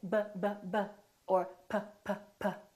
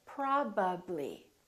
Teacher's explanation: I'm putting my lips together both my upper lip and my lower lip are working